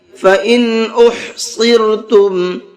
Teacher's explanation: اس نون کو ظاہر کر کے پڑھیں گے، اس نون کے اندر غنہ اخفا نہیں کریں گے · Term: اظہار